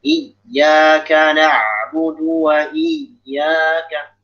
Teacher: Jadi number itu adalah kita menekan suara lebih tinggi daripada suara biasanya